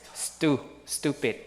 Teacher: So T in stupid is unaspirated